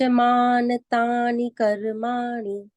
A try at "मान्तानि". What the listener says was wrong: अब देखो, आपने बोल दिया मान, मान में हो गया न पूरा, मान आधा है ना, न हलंता यहाँ पे। न च मान तानि कर्माणि